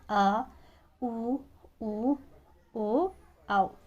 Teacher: तीसरा है पश्च स्वर। जिन स्वरों के उच्चारण में जीभ का पश्च भाग काम करता है इसे हम पश्च स्वर कहते हैं।